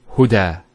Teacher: There's the elongation as well, because the fatha followed by an alif. If this wasn't there, it will be huda, but huda with the alif.